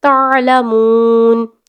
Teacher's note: تا کو آئین کے ساتھ ملانا ہے اور آئین کی آواز کو پرومیننٹ کرنا ہے